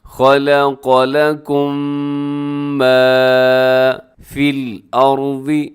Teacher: خلق لکم ما فی الارض، اس میں را موٹا پڑا جائے گا